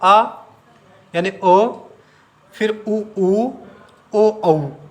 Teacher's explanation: हमारे होठ गोल हो रहे हैं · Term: वृत्ताकार